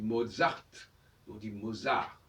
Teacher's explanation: on n'entend pas le T, pas plus que dans Schubert